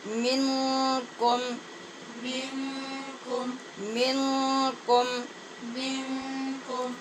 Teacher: نون پہ اخفا ہے غنے کے ساتھ، اور کم میں میم ساکن ہے، یہاں پر اظہار ہے کیونکہ اس کے بعد واو ہے اور احتیاط سے اظہار کرنا ہوگا۔